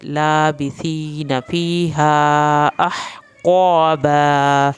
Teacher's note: हा को आपने हल्क से पढ़ना है, क़ाफ को पुर करके पढ़ना है।